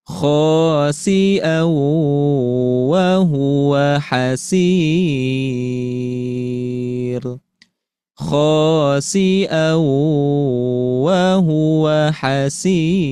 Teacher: Kemudian hasir, ini naik ya, iramanya atau nadanya ke nada kelima